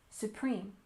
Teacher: we stress the second syllable in Supreme